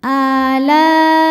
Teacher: Mad tabi'inya alif didahului harokat fathah, hamzahnya i terdapat pada kata alai. Maka la-nya panjang, boleh 4, boleh 5 harokat. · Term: mad wajib muttasil